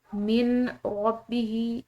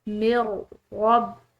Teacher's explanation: تو جب میم غ سے ملے گی تو درمیان میں آنے والی نون ساکن جو ہے یہ بالکل ختم ہو جائے گی، اس کی آواز نہیں ہوگی۔ اس کو ہم پڑھتے ہیں من ربہ، اس طرح اس کو پڑھیں گے تو یہ غلط ہوگا، اس کو پڑھنا ہے من ربہ۔